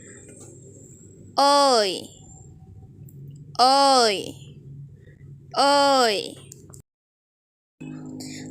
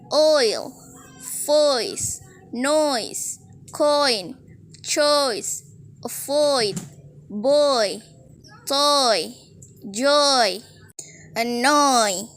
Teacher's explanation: a nice and Full O and then connect to the e now let's Glide from the o to the E and blend two sounds together